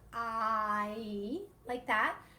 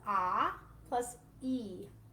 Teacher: one in the sound series i is actually a two-part vowel it's one vowel sound but it actually is a combination of two vowel sounds together it's called a diphthong · it's a combination of ah plus e